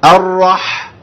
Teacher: برض دلوقتي الحاء عليها ايه علامه السكون هي راص الحاء ديت الحاء اللي عليها السكون ديت برض زي السين بالضبط حرف ايه بيمشي فيه ايه الصوت شويه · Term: صوت البحه